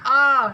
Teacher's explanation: विवृत स्वर को बोलने में पूरा मुंह खुलता है